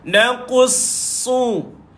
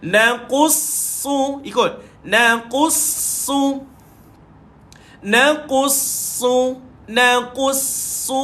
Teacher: Bila tuan-tuan nak baca su tu, ada sabdu pada su, tuan-tuan tak payah muncung. Tuan-tuan nampakkan gigi saja.